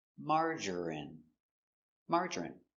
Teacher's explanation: Three syllables, stress on the first syllable